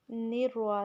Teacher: نون کو را کے ساتھ سختی سے ملائیں گے نروا نرمی ساتھ نہیں ملانا نروا ٹھیک ہے پھر نرواحیم نہیں